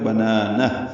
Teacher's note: ہا ساکن پہ ہمس ہو